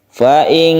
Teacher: Ikhfa artinya samar, kita baca samar. Caranya yaitu ketika kita membaca nun mati, kita bersiap membaca kaf. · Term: ikhfa hakiki